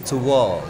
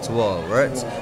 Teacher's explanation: Ada u ketemu sama vowel yang lain disambung pakai w